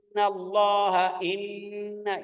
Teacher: Nun tasdid Nun atau mim yang bertasdid dia ambil seluruh rongga hidung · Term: tengkat pertama